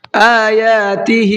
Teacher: یہاں پر حمزہ کو بھی کھینچنا ہے اور یا کو بھی کھینچ کر کے پڑھنا ہے، دونوں کو کھینچ کر کے پڑھنا ہے۔